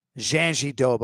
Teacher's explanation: there's no D nor R sound where those consonants exist